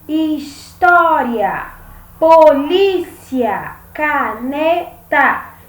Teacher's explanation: a penúltima sílaba é a sílaba mais forte então essas palavras elas são paroxítonas e as proparoxítonas são aquelas